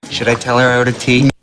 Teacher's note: Should I tell her I ordered tea? I ordered both a little flatter, lower in pitch.